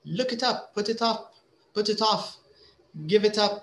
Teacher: we have the K consonant the I is a vowel so it's linked